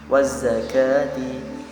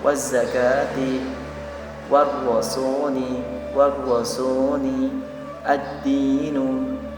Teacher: jadi alif lamnya itu tidak dibaca, seperti memang tidak dibaca karena langsung masuk ke huruf setelahnya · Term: alif lam syamsiyah